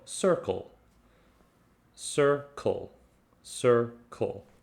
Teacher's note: really interesting because it actually has both c sounds in it it starts with the soft c the s sound sir and then it ends with the hard c sound